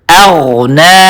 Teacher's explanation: اغنا کے شروع میں حمزہ ہے اور اس کے بعد غین ہے. غین حروف مستعلیہ میں سے ہے, ان حروف میں سے ہے جن کو ہمیشہ پر طریقے سے پڑھا جاتا ہے, فل ماؤتھ کے ساتھ. تو ہم پڑھیں گے اغنا او حمزہ کو باریک کر کے اور غین کو پر طریقے سے.